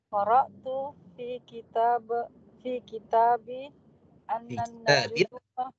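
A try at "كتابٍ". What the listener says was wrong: Fi kitabin, tanwin Bu.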